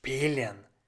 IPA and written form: ˈʃpiːlən (Spielen)